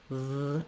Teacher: Make sure with your V sound in this and any word that you have your lower lip and upper teeth connecting, v, and the sound continues